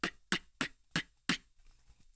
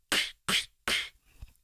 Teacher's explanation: the rim shot sounds like very similar to the inwards k but it's not as sharp because it doesn't have the air coming in behind it